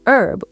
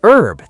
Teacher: In America, we say herb. We don't say the H.